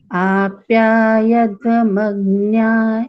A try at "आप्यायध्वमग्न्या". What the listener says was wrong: आप्या यध्व ऐसे नहीं उच्चारण करना है, य पे थोड़ा दबाव।